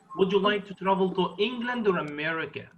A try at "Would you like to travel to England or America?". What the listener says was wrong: Don't stress America, please. Like, would you like to travel to England or America? Or America?